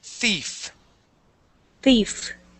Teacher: th sound is what's called a voiceless or an unvoiced th.